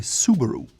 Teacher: English speakers will put the emphasis on the first syllable and say Subaru.